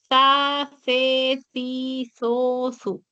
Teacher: Colocas la lengua entre los dientes sin apretar y expulsas expulsas el aire. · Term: sonido interdental